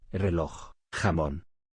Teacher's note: se acentúan en la última sílaba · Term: agudas